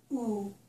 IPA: u